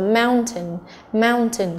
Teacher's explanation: mountain cũng là trọng âm thứ nhất